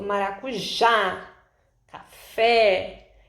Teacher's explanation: As palavras, elas classificam-se em oxítona, quando a última sílaba é a sílaba mais forte, que dá mais destaque